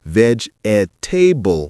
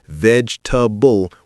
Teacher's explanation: Not vegetable with four syllables. It's vegetable with three syllables. The middle e disappears.